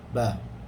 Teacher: Ba hanya mengatupkan dua bibir sahaja.